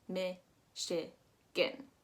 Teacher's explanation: we're actually going to be pronouncing that CH as an SH. Michigan. I also want to make sure that you know that that gin is actually, that G-A-N is actually more of an I sound.